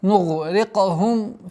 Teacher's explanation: Здесь ра с огласовкой кесра мягкая и каф с калькалей, применением калькаля.